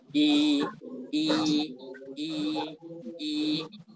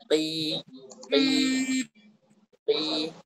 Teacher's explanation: kalau kita ucapkan i lidah terangkat tengah lidah terangkat tapi tidak sampai nempel ke atas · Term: ya mad